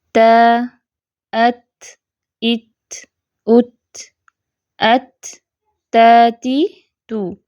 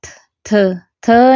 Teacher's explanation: تا کی ادائیگی میں رأس اللسان یعنی کہ زبان کی جو نوک ہے نرمی سے ثنایا اولیاء کی جڑوں کو لگتی ہے، یعنی وہ ٹچ کرتی ہے، ہٹ نہیں کرتی، ٹکراتی نہیں ہے، لگتی ہے، اور باقی زبان جو ہے وہ نیچے ہی رہتی ہے۔